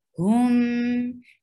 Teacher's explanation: Ikhraju, circle your lips for dhamma. Hum, and circle your lips for ha, because there is dhamma on ha, and bring back your lips on meem because there is sakoon, there is no dhamma on meem.